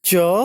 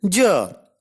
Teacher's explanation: Ch is a voiceless palato-alveolar affricate and j is a voiced palato-alveolar affricate. Means both are palato-alveolar affricates.